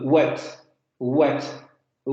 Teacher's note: dos puntos de articulación en los labios y en el velo del paladar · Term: aproximando labio velar sonoros